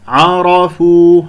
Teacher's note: عرفوا، لا أقول عرفوا، العين مرققة والراء مفخمة لأنها مفتوحة، فأنت تقول عرفوا، خطأ فانتبهوا.